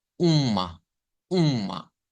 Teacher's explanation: ¿y de dónde es que sale esa ñ o esa n que se escucha a la par de la U? Es por la nasalización. La virgulilla nos indica el sonido nasal.